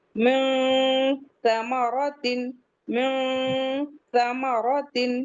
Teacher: اس کے بعد نیکسٹ ہے نون ساکن کے بعد تا آیا ہوا ہے، تو من ثمرۃ نہیں پڑھیں گے، ہم اخفا کریں گے، چھپائیں گے اندر نون کے ساؤنڈ کو